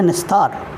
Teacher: शब्द है निह प्लस तार, विसर्ग दंत स में परिवर्तित है, शब्द बना है निस्तार।